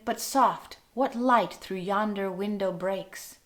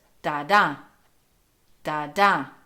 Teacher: We have unstressed and then stressed, so it's da-da, da-da. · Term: iambic meter